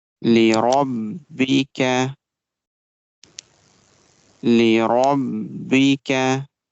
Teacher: Ra sound will be bold and it will be connected with ba.